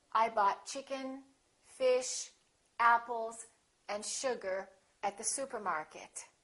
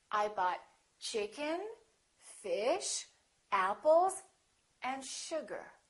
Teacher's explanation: For example, when you say, I bought chicken, fish, apples, and sugar at the supermarket. Each of those items that you list should have a rising intonation. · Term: list items in a series